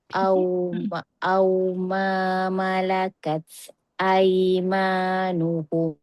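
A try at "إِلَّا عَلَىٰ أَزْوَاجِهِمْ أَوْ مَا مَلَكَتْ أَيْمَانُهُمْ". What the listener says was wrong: Huruf ta dia berangin cantik dah. Tapi angin dia jangan lepas terus. Dia kena tahan sikit.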